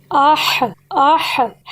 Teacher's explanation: ہا کا مخرج نکالتے ہماری آواز حلق کے درمیان میں آواز رکی ہے، تو سمجھ لیجئے کہ ہا کے مخرج کے نکلنے کی جگہ حلق کا درمیان ہے۔